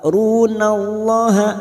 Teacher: Ru cuma bertemu sukun 2 harokat. Runallaha, lam jalalah yang sebelumnya fathah kita baca tafkim